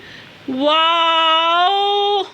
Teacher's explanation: واو ہونٹوں کے ناتمام بند ہونے سے ادا ہوتا ہے